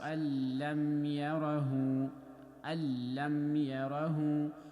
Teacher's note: this is idgham kamil. We don't have any nasal sound, we don't have, we are not holding to the noon.